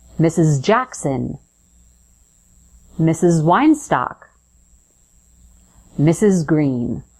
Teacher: That final S is actually representing the sound Z. So it buzzes, your vocal folds or vocal cords vibrate.